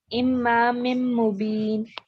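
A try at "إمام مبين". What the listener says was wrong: Aha, you haven't done the 2 counts here. Imam Mubin. Imam Mubin.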